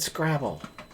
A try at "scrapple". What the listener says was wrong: You said Scrabble, but it's Scrapple.